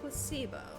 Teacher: the stress is on the middle syllable